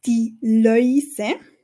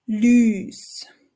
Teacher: auf Hochdeutsch hörst du den Öi-Laut, die Läuse wird zu Lüs